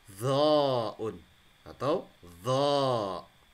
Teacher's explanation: Nah, ini ketemu dengan huruf litsawiyah karena warna kuning, kemudian warna biru adalah huruf tebal. Jadi ditebalkan dan lidahnya agak keluar dikit seperti digigit.